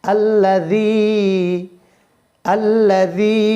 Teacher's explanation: জালটা নরম উচ্চারণ হবে এবং একালিফ টান হবে